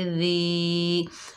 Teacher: दाल के नीचे ज़ेर, आगे या साकिन है, दाल को या साकिन से मिलाएंगे, ये या मद्दा है, एक अलिफ की मिक़दार खींच कर पढ़ेंगे और दाल को नरमी से अदा करेंगे।